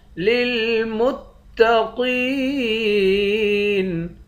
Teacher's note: تا کو اس والے لام کے ساتھ ملا کر سختی کے ساتھ جمع کر پڑھیں گے۔ للمتقین قاف کو موٹا پڑھیں گے، قاف کو یا کے ساتھ ملا کر ایک الف کے مقدار کھینچیں گے، آخر میں نون ساکن ہے۔